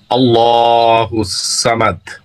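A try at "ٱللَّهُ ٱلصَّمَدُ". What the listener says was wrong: আল্লাহু সামাদ, আল্লাহ সমাদ, আল্লাহু সমাদ। তো আজকে মোটা হয়ে হবে, হ্যাঁ, সা হবে না, যেমন সমাদ, হ্যাঁ হ্যাঁ সমাদ।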